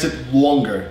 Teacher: I'm from the East Coast, so our vowels are much longer. Here I just said longer, not longer, longer.